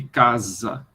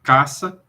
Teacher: Z é sonora e o caça é surda